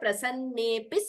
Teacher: when you split it it is prasanne api but we don't split we chant it together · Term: purva rupa sandhi